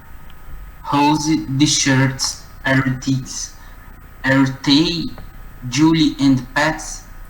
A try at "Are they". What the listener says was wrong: They. Ao invés de som de T, né? Are they, é tipo are they.